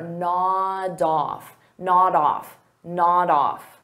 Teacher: So notice I'll take that D sound and I'll connect it on the off, but I have to combine it together.